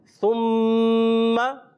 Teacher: यहाँ पर मीम मुशद्दद होने की वजह से एक अलिफ का गुन्ना करेंगे। अब सुम्मा को, सा को जो है सीन में बदलना नहीं है, सीन से बचाना है, सुम्मा नहीं करेंगे।